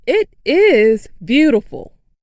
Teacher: makes the word is longer and louder.